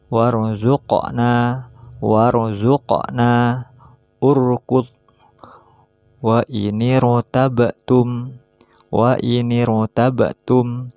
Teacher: ra mati di awal kata sesudah hamzah wasal juga harus dibaca tebal atau tafkhim